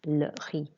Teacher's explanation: Don't pronounce the Z at the end, just the E sound of the I.